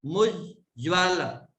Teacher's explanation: आधा ज पहले पढ़ लिया फिर आधा ज बाद में पढ़ा